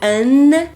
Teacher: o N vai ser essa âncora aí do an, é a língua batendo no dente